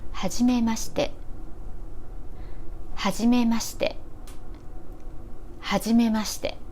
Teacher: The pitch is like this. It starts low, then moves high till ma, then drops on し て